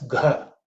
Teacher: this is the fourth letter in the ka varga, so it has to be aspirated